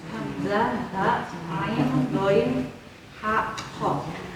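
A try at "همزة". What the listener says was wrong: Hamzah. Bukan hamya, hamzah. Hamzah, ha.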